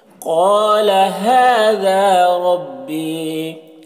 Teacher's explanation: हादा हा में खड़ा ज़बर है और यहाँ पर अलिफ मद्दा है, दोनों के एक अलिफ के बराबर खींचेंगे। रब्बी रॉ को पुर पढ़ेंगे, या मद्दा है, एक अलिफ के बराबर खींचेंगे